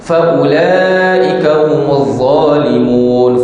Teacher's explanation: Faula pun panjang 4 harakat.